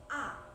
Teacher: vokal tengah, yakni vokal yang dihasilkan oleh gerakan lidah bagian tengah